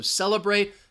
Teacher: celebrate second syllable has the schwa